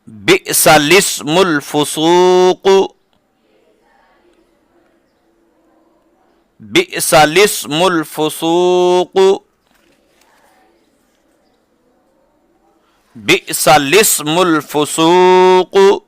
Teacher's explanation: لام سے پہلے اور لام کے بعد دونوں الف نہیں پڑھیں گے بلکہ لام کو زیر دے کر پڑھیں گے